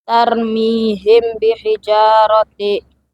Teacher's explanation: mim mati dibaca samar dengan gunah karena bertemu huruf ba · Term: ikfa safawi